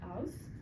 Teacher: Cockney has its own pronunciation, including the dropping of the H at the beginning of words. So for example, with the word house, in Cockney it would be house.